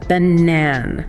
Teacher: You can barely hear those a sounds at the beginning and end.